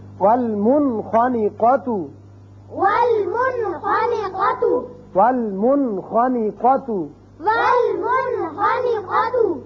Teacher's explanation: نون ساکن کے بعد اگر ایک کلمے میں آئے تو یہاں اس کا اظہار ہوگا